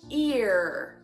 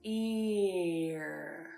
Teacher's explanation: make that into a word I'm going to say ear and my tongue all it did there was go to the E position and then get pulled back a little tighter